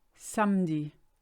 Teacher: We tend to skip the middle E there.